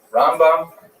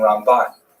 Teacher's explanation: Rambam is pronounced with the emphasis on the first syllable, Ramb. And Ramban is pronounced with the emphasis on the second syllable